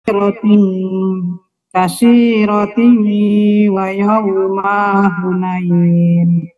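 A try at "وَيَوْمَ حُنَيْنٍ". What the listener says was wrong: Dia tiknya nggak panjang.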